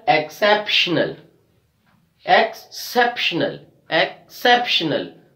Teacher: So we are stressing on CEP. The CEP is actually the third from the last syllable.